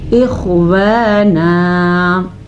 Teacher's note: مد کو ہم تقریباً 2.5 سیکنڈ تک 2.5 سیکنڈ تک کھینچ کے پڑھیں گے اور خا کو پر پڑھیں گے